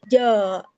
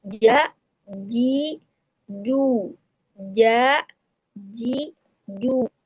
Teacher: huruf jim itu adalah istifal. Huruf yang ee lidah terhampar sehingga dia termasuk huruf yang tipis. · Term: huruf tipis